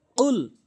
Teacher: কফটি জিহ্বার গোড়া থেকে উচ্চারণ করতে হবে